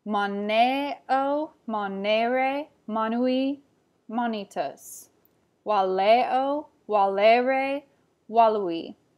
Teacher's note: Second conjugation has a long E sound on the penultimate E.